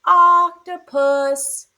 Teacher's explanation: We actually have two stress syllables.